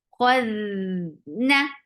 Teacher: Dal will get sifa of rakhawa. So the sound should flow nicely. خذنا. Na is short.